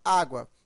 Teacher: aqui ele é pronunciado de forma fraca tá ao lado de uma vogal e tem som de u semivogal